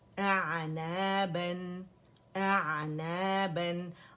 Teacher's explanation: آئین کا توسط ہم نے شو کرنا ہے